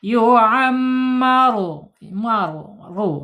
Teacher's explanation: Awas rnya tebal karena harakatnya domah ya. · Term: Ro tebal